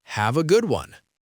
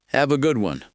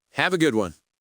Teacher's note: Notice the main stress is on the word good. This makes it sound positive.